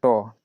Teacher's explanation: ट जब बोलेगा तो आपका जीभ देखिएगा मूर्धा में जाकर के ऊपर सटता है ना, तालु से हल्का ऊपर